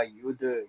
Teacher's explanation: یہاں دال ساکن ہے، اس میں قلقلہ خوب ظاہر ہوگا